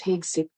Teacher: with the emphasis on the first syllable, HEG, followed by Seth.